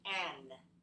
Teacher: You got a little bit mixed up between n and m, especially at the end of a syllable.